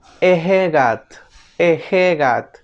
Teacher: La E se conoce en fonética como vocal semicerrada anterior no redondeada. La E suena como en el castellano, por ejemplo en la palabra ejegat, ejegat, que significa viento.